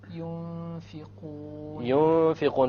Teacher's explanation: You have the noon sakina followed by a fa. Once again, there will be ikhfa.